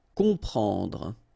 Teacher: You've got OM, and after that you've got a consonant, so you will get the sound on, nasal, okay? You don't hear any M here